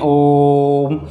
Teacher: प्लुत ध्वनि, जिनमें हम 3 मात्राओं तक लंबे समय तक खींचकर इनको बोलते हैं